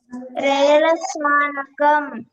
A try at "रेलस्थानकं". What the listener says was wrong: రేల స్థానకం, అక్కడ ఒత్తు తా ఉంది. రేల స్థానకం. మళ్ళీ చెప్పండి.